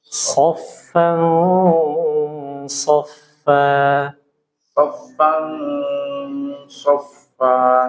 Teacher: tebal tafkim ya jadi ikhfa tapi ikhfanya itu tebal gitu ya Nun sukunnya atau tanwinnya itu samar samar tidak jelas sambil pangkal lidahnya diangkat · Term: ikhfah Hakiki